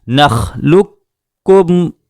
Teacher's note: قاف کو ہم نے سائلنٹ کر دیا